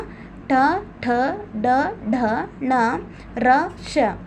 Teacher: ಇವು ನಾಲಿಗೆಯ ಮೇಲ್ಭಾಗದ ಮೂರ್ಧ ಅಂಗಳದಲ್ಲಿ ಹುಟ್ಟುವುದರಿಂದ ಇದನ್ನ ಮೂರ್ಧನ್ಯ ಅಂತ ಕರೀತೀವಿ